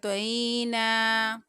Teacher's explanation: توئی، نون کے اوپر یہاں پر کھڑا زبر ہے، نون کو 1 الف کی مقدار کھینچتے ہوئے اس کی ادائیگی کریں گے